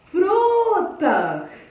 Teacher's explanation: vocês perceberam que o fru, galera, foi a sílaba que eu falei mais forte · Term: sílaba mais forte